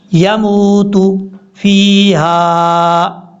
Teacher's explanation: میم کے بعد جو واو ہے اس واو کو لمبا کریں گے کیونکہ یہ واو مدہ ہے